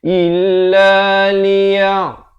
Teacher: Illa, bukan illa, jangan baca il, tapi baca il. Hamzah baris kasrah bunyi i, bukan bunyi e. Illa liya, di pertengahan kerongkong.